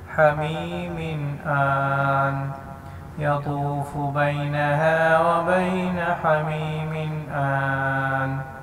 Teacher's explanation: اسی طرح حمیم آن، ٹھیک ہے، یہاں پر جو ہے نون کو ہم ساکن کریں گے، حمیم آن، حمزہ کے اوپر کھڑی زبر ہے، تھوڑا سا لمبا کریں گے اور یہاں پہ نون کو ساکن کر دیں گے، حمیم آن یطوف بینہا وبین حمیم آن۔